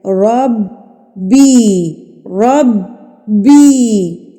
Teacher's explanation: با کے اوپر تشدید ہے تو اس کو مضبوطی سے پڑھنا ہے